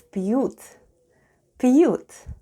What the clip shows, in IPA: p'yoot